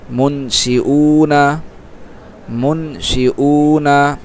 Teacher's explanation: এক আলিফ টানতেছি যেহেতু আমরা নুনের হরকত আমরা দিচ্ছি থামতেছি না